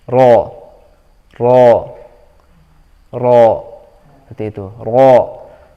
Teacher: Ro ini juga huruf tebal, jadi harus diangkat lidah belakangnya. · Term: ro tebal